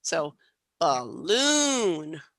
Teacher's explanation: I really have that long length on that second syllable